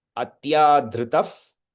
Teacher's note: The visarga will change into F.